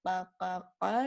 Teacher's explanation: it is articulated where the deepest part of the back tongue touches the upper soft palate. Okay, so when we say the soft palate, you can feel it, the soft palate, either with your back of the tongue itself. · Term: Al-Qaf